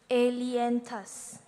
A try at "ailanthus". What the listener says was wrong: Not lien, lan. Ailanthus.